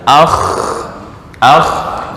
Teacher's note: itu makhrajnya di tenggorokan ujung tenggorokan